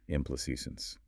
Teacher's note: The primary stress, the main emphasis, falls on the third syllable, A, which has the E sound like in say or make, implications.